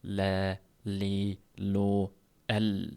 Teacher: Lam harfining mahraji. Bu harf mahraji tilning oldingi uch qismi va oldingi yon tomonlari.